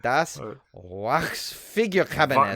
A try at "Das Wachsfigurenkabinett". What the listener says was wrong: Not Vox. Das Wachsfigurenkabinett.